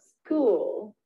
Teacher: people can get the idea this one's a little tricky because it kind of blends into the l so it's not as pure of an ew